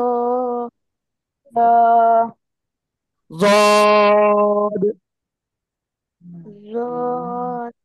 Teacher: জিহ্বার গোড়ার কিনারা উপরে মাড়ির দাঁতের গোড়ার সাথে লাগিয়ে তিন আলিফ টানিয়া যদ উচ্চারণ হবে